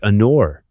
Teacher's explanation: Consider the word hour. Although it starts with the letter H, the H is silent.